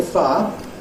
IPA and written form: faə (Fire)